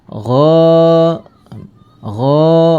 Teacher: dibaca panjang Karena ada harakat fathah bertemu dengan alif ya nah panjangnya dua harakat atau satu Alif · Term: Mad thii